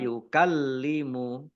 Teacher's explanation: lamnya dibaca dobel karena ada tasdidnya